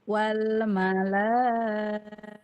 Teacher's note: Ketika ibu memanjangkan la itu dia mengalir di aljauf, rongga mulut dan tenggorokan. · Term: mad